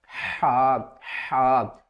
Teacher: ہا جو ہے یہ حلق کے درمیان والے حصے سے ادا ہوگا، حروف ہلکی ہے نا